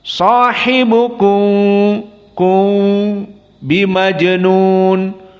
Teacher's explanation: masuk sedikit kepada ba, tidak ditutup mimnya. Beda dengan jika tidak bertemu dengan ba menjadi idhar halki, idhar syafawi. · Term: ikhfa syafawi